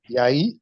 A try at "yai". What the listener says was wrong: Yai. I said it's very slow. Yai. Then bring them together.